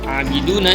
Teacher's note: Mad Thobi'i panjangnya dua harokat